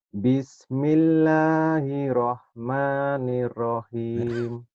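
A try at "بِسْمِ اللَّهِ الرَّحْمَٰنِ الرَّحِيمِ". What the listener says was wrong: Itu ada tasjidnya juga sama Mas. Kurang nyamber Mas.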